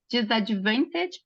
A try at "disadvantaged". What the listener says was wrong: Disadvantaged You don't pronounce the D there.